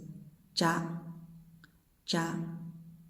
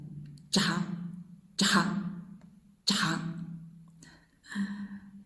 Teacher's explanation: Now it's voiced, ja, ja. Voiced with breath